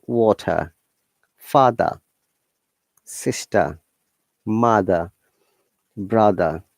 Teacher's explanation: in most of the cases in british english we do not pronounce letter r okay it is replaced by the vowel sound